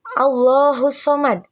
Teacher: Hamzah wasal pada Allahu diabaikan saat disambung. Tasjid pada sad di as samad huruf dal.